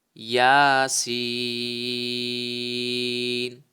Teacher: اور آگے سین جو لکھا ہوا ہے اس پر حروف مدہ یعنی کہ سین یا زیر سی یہ حروف مدہ ہے اور آگے سکون اصلی ہے، تو اس کو جو ہے وہ ہم تین الف کے برابر کھینچ کر پڑھیں گے کیونکہ یہاں پر مد لازم ہو رہی ہے.